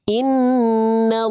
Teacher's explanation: Lam ketika pada lafaz Allah, ya, itu juga dibaca tebal, tapi hanya pada lafaz Allah yang didahului fathah atau dhammah. Sama cara nebelinya sama.